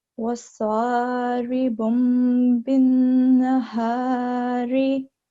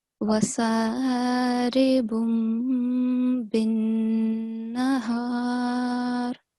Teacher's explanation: So we have to make nasal sound. And for how long do we have to hold it? For 2 seconds. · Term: Noon Mushaddad